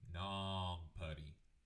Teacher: it kind of sounds like you have something in your nose or that you're stuffed up that's a nasal sound and so uh i like to think